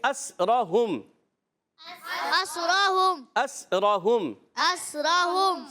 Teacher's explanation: سین کو سیٹی کے ساتھ پڑھیں گے